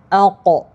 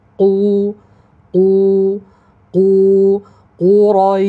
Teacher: Harfu qaf yang mana makhrajnya melibatkan bahagian pangkal lidah. Pangkal lidah dinaikkan ke arah yuvula. Yuvula iaitu kawasan lelangit lembut.